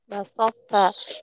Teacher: Jadi apabila to sukun bertemu ta, maka qalqalah huruf to-nya itu hilang. Namun tetap dibaca tebal huruf to-nya.